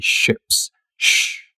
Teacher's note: So first, I'm going to ask you to pay attention to your lips. You'll notice that your lips are tensed and bunched up in front when you say ships. Shh. Now, if you relax your lips, the pitch goes up.